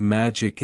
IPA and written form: ˈmædʒ.ɪk (Мagic)